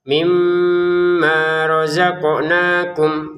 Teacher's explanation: Mimma dengan dengungan, ma-nya panjang 2 harokat, qafnya kita pantulkan, nunnya baca 2 harokat. Mimma razaqnakum gitu ya.